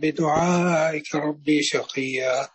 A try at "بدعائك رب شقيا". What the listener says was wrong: لا هنا هنا الباء هنا هنا الباء مكسورة وليست ياء محضة لا رب شقية على طول بشقية بشقية رب شقية